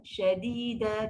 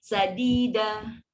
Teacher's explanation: Shin tengah, tiba pergi belakang gigi. Sadida, bunyi pun sangat lain.